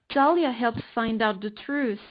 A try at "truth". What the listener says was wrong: You're saying truth, but not truth. Like a D instead of a T. Like, I think that's there's something wrong there.